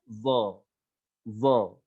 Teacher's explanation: Nah, ketika bibir kita nggak kita tarik, ya, bibir kita karena dia huruf yang berat, ya, huruf isti'la, huruf yang berat, maka nggak kita tarik bibir kita ke belakang